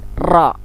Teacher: Ro, ujung lidah melengkung ke atas ke langit-langit.